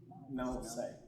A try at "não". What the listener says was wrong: Usually English speakers have a difficulty with the nasal. It's not now say, right? It's now. You say now. You gotta make this face. Now. Bit like a cat.